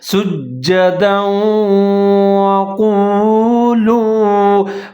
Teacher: سجدوں، دال کے اوپر دو زبر ہیں، اس کے بعد واو حروف جر ملون کا ہے اور مشدد ہے، تو واو کو دال کے ساتھ ملا کے پڑھیں گے، ادغام کریں گے غنے کے ساتھ۔ سجدوں وقولوا، قاف موٹے والا ہے، اس کو آپ نے موٹا کر کے پڑھنا ہے، پر کر کے پڑھنا ہے۔